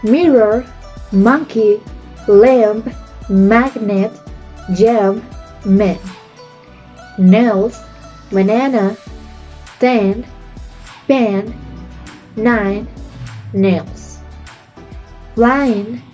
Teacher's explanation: called nasals because the outgoing air stream passes through the nose instead of the mouth